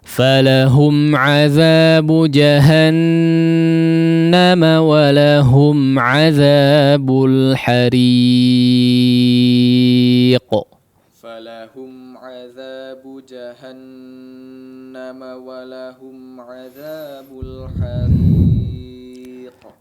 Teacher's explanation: Baik, di sini mungkin yang jadi peringatan adalah di gunnah yang akmal ya, gunnah akmal ma takun ya, yaitu gunnah yang dipanjangkan yang terdapat pada huruf nun dan mim yang bertasydid